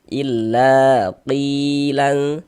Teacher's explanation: Maka huruf yang memiliki tanda baca fathah ini dibaca panjang. Sehingganya la kita baca panjang mad thobi'i panjangnya dua harakat